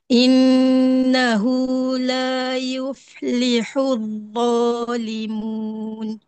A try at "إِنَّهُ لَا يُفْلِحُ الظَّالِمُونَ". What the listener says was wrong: Bunyi macam dha. Okey, cuba lembut lagi dha. Dialihkan suara dha tu tak betul sebut.